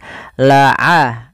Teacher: Ain kita keluarkan daripada tengah tenggorokan kita. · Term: huruf ain